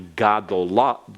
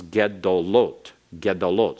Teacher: that ga has to shorten, and the shortest possible vowel is the simple schwa. And the same in the feminine plural.